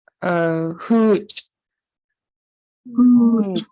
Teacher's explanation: So it's H and then a long high tone O and then a pinched CH. So that pinched CH will sound like you'll kind of snap the sound.